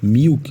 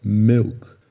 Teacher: Você fala um I misturado com E.